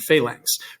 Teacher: it's got that sort of ng-ish quality to it